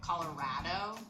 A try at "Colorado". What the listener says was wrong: So here she's saying Colorado and it's Colorado. It's just the fact that you are emphasizing the row, and for her it's just row. It's not Colorado. It's not Colorado, it's Colorado.